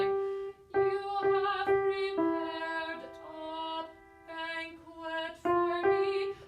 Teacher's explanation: you use the tip of the tongue to say D, and then there's a little space before paired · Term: D sound